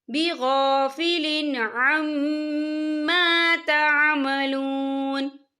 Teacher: وما اللہ بغافل عما تعملون، یا دیکھیں بغافل عما، یہاں میم مشدد ہے تو یہاں پر غنہ ہوگا، اور ما یہاں پہ الف مدہ ہو رہا ہے، خالف سے پہلے زبر ہے، تو ہم اسے 2 یا 3 حرکت کے برابر کھینچیں گے